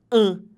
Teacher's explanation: ele é um som que não sai pela boca mas que sai pelo nariz em vez de falar a eu falo um é como se